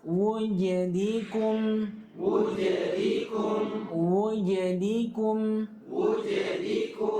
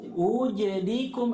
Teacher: Jadi harus ada bunyi wu, wu. Kadang ada orang bukan wu tapi hu. Ya, wujadikum, seperti hamzah yang di dhamma ketemu dengan waw yang disukun.